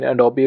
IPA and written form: əˈdoʊbi (Adobe)